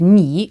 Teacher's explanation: You informal is ni, with the falling rising pronunciation again